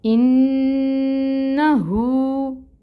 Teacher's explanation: نون کی زبر کو لمبا نہیں کرنا، نون کے اوپر آپ نے 2 کاؤنٹس ٹھہرنا ہے. ٹھیک ہے، غنہ 2 حرکت کے برابر اور حرکت جو ہے زبر کی حرکت فتحہ وہ 1 کاؤنٹ ہی پڑھیں گے.